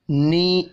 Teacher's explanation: یا کے اوپر کھڑی زبر ہے، ایک الف کے برابر کھینچ کر پڑھیں گے